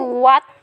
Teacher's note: This becomes simply a W, what, that initial aspiration is lost